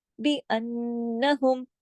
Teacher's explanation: नून पे तशदीद है, उसका पूरा गुन्ना होगा